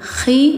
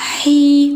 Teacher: bacanya ada kayak dengkur khi jadi bukan hi